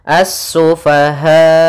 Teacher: mad wajib muttasil itu kita panjangkan sepanjang empat harakat